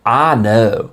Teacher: to go to Waggles I know I know you gotta accentuate you take the eye and flatten it